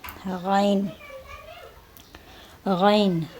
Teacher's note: آواز کو پرحجم یعنی آواز کو موٹا نکالنا ہے، باریک نہیں نکالنا ہے